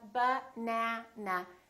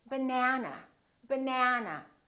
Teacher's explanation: this second syllable is stressed that means this vowel is going to be much longer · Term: prolonged